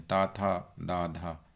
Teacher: तो ता जो है वो दंत ध्वनि है